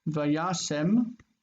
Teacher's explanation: It's vayasem, where that e becomes short eh.